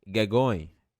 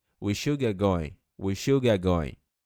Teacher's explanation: Você pode tirar esse T e falar get going. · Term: connected speech